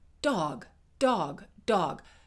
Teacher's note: Mine hits what we would call the alveolar ridge. That's the ridge at the top of the teeth, the upper teeth. It's that gum ridge right at the top of the teeth.